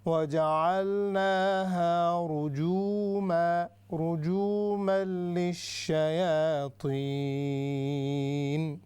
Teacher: جو جیم ہے یہاں پر واو مدہ ہے تو ہم نے لمبا کرنا ہے اس کو